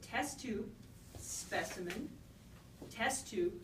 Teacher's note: they both have the same stress on the first syllable, same first vowel